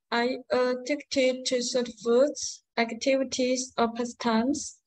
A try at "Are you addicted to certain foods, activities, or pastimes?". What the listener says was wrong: Wow, yes, exactly. Intonation is 4 marks.